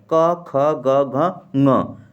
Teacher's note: कंठ ध्वनियाँ मतलब जो कंठ से बोले जाते हैं